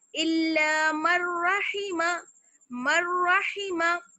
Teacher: अगर हम इसकी साउंड थोड़ी सी लेकर पढ़ लें, यानी नून की आवाज थोड़ी सी मिला लें, जैसे मर्रहिमा, मर्रहिमा, तो ये गलत हो जाएगा। मीम को हम डायरेक्ट रा से मिलाएंगे और नून की आवाज बिल्कुल खत्म हो जाएगी